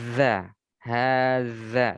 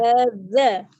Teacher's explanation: lidahnya itu diapit antara gigi atas dan bawah, kemudian kita tekan dengan udara dari dalam